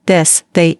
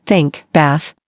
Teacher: This sound exists in two forms: voiced, this, they, and unvoiced, think, bath. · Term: th sound